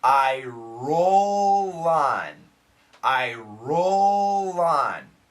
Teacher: and remember the word the pronunciation American pronunciation is on so the L connects very smoothly I roll on I roll on your tongue doesn't need to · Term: linking sound